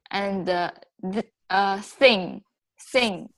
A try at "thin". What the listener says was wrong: Thin. Your tongue's not coming out. I could see your tongue's not coming out.